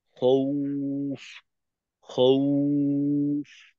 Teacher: আর টানটা যেহেতু ওয়াও এর মাধ্যমে হচ্ছে, তো টানটাও ঠোঁট গোল করে হবে। বাকি ফায়ের উচ্চারণে যেন গোল ভাবটা না থাকে।